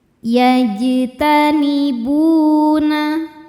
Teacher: Cara membaca jim ini adalah kita pantulkan dengan pantulan yang kecil. · Hukum tajwidnya adalah mad thobi'i zohiri. Sebab ada wau sukun yang sebelumnya dommah. Cara membacanya dipanjangkan dua harakat. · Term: qalqalah sugro